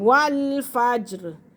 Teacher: جیم پہ قلقلہ ہو رہا ہے